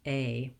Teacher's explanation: It's a diphthong in American English. We glide, we go from the tense to the relaxed. A. Just make sure you hold it longer.